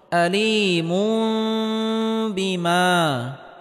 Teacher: আয়দা বুন, তানবিনের পরে ইকলাবের হরফ বা আসার কারণে এখানে ইকলাব গুন্নাহ করে পড়তে হবে, অর্থাৎ তানবিনকে ছোট মিম দ্বারা পরিবর্তন করে পড়তে হবে।